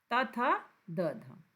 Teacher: द जो दांत से बोला जाता है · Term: त वर्ग